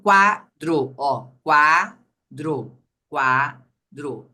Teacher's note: Se o U for pronunciado junto de outra vogal, ou seja, no único movimento da boca, ele vai ser a semivogal. E o a vogal.